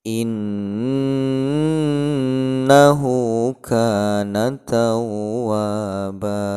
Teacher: Itu ha yang harokahnya domah terbalik itu dibaca 2 harokah ya. Itu disebut dengan mad silah qasirah ya.